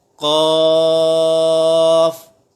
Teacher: قاف حروف مستعلیہ میں سے ہے تو ہم یہاں پر قاف کو پر پڑھیں گے